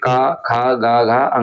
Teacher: जितने भी क वर्ग के वर्ण है इनका सबका उच्चारण स्थान कंठ होता है।